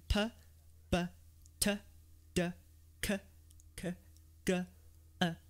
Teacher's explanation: you'll notice the sounds go from front of the mouth to back of the mouth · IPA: p b t d